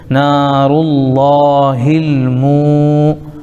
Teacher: ہل، نارلہ ہل، میم پر پیش لیکن واو ساکن ہے تو واو ساکن سے پہلے میم کو پیش ہونے کی وجہ سے واو مدہ ہو جائے گا، کھینچیں گے